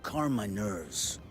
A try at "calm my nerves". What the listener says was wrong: Calm my nerves. You really pronounce the L.